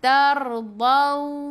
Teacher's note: Tar sebelum ra baris atas, ra-nya baca tebal, lidah naik ke atas